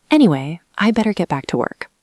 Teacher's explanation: you say anyway with a falling tone and then give a reason to leave